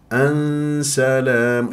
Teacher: اخفاء اذهب الى حيز مخرج السين